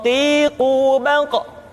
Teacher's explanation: Diucapkan dengan suara yang tebal dan dalam posisi sukun, maka terdengar pantulan suara. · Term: huruf Qaf